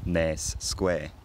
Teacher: in scouse the end quality can also be closer to what would normally be the square vowel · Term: square nurse merger, square-nurse merger